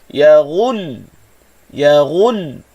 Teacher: Jangan panjangkan bunyi lam, tetapi beratkan pada sebutan huruf ghin hujungnya. Ghin tu kita sebut bagi depan satu harakat, tetapi satu harakat tadi, hujung sebutan satu harakat ghin tadi tu dah berat dah. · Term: lam bertasydid